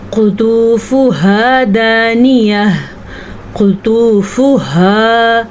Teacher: قاف کو موٹا کر کے پڑھیں گے اور طا کو بھی موٹا کر کے پڑھیں گے